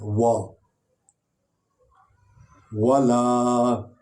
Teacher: وا حرف شفویہ حرف یعنی ہونٹوں سے نکلتا ہے